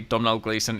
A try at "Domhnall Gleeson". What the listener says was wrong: And it's Domhnall Gleeson. The M is silent. M is silent. Yes, Domhnall. It's like tonal, but with a D. Domhnall.